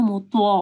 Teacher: طاء کو ہیوی پڑھنا ہے